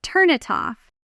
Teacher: The N of turn slides directly into it, and the T of it slides into off, you, until it sounds almost like one long word. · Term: connected speech